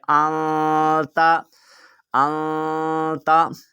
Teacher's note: نون کے بعد تا ہے اور تا کیونکہ حروف اخفا ہے تو حروف اخفا کے اندر ہم نے غنہ کرنا ہے